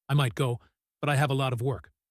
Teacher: Might and go are strong. But is a conjunction often weak.